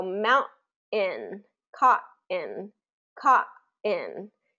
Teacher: is called a glottal stop and what that means is that your vocal cords basically come together